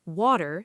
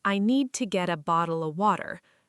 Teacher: In American English, a T sound between two vowels often turns into a quick soft D sound. Water sounds like waiter. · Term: flap T